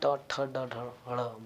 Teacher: जैसे ही हम ट ठ ड ढ ड़ बोलते हैं तो तुरंत ही जिह्वा हमारी तालु के पीछे जाती है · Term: मूर्धा